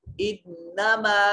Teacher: इन्नमा में नून मुशद्दद है, गुन्ना वाजिब होगा